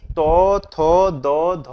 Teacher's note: পাঁচটি ধ্বনি উচ্চারণ করতে গেলে জিহ্বা আমাদের দন্ত স্পর্শ করেছে তাই এগুলোকে দন্ত ব্যঞ্জন বলি